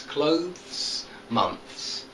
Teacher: you've got to try to make a th and then a s sound but there's not there's only one syllable in both of these words